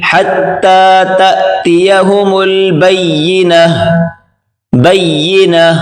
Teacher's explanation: یہاں پر گولتا آپ دیکھ سکتے ہیں، وقف کی حالت میں جب ہم نے ابھی وقف کیا تو یہ تا سے ہا ہو گیا۔ وقف کی حالت میں جہاں بھی ہو گولتا اس کو ہا پڑھیں گے